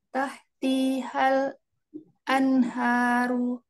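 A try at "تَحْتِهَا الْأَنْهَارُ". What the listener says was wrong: Ya, T-nya tidak panjang ya Bunda ya. Tahtihal anharu.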